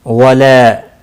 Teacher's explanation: لا الف مدہ ہے، 1 الف کے برابر کھینچ کر پڑھیں گے